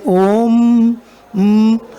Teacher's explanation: try to say om m so your lips get so it your lips get closed so therefore it is called bilabial